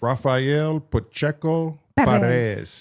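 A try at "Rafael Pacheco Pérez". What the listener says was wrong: You have to roll your R's.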